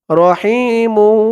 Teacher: মু বলে টান দিতে হবে গুন্না করবো গুন্না করতে হবে